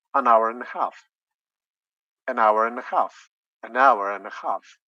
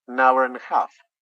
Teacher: letter d is lost yeah so we say an hour and a half